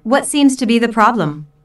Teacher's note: notice that the intonation Falls at the end of the question